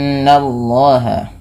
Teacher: Nun berharakat tasdid dinamakan dengan bacaan gunah tahan dulu bunyi suara n ya sepanjang dua harakat